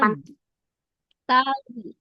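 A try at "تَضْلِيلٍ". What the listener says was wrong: jangan ada pantulannya.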